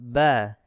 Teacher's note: kita lihat makhraj huruf ba dengan intibaqu syafatain, dirapatkan bibirnya.